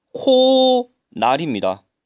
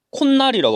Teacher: 모음으로 끝나는 형태소가 니은, 미음으로 시작하는 형태소가 결합할 때 사이소리가 첨가되어 니은이 발음되는 경우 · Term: 니은 첨가